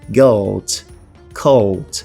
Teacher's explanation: essas vogais longas no inglês irlandês, elas dão um aspecto melódico ao idioma. São basicamente quando eu tenho aqui o encontro de duas vogais e as línguas tendem a prolongar esse encontro, dando um ar um pouco mais longo, literalmente longo, desses fonemas. · Então você percebe aqui que eles estão prolongando as vogais.